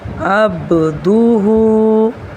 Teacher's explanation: اس کی با پر قلقلہ کریں گے،